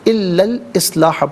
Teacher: درمیان میں سے الف یعنی حمزہ کو حذف کیا جائے گا، الا الاصلاح پڑھا جائے گا، اور اریدو میں را کے نیچے زیر ہے، را کے نیچے زیر ہو تو باریک پڑھتے ہیں، زبر یا پیش ہو تو را کو پر پڑھتے ہیں۔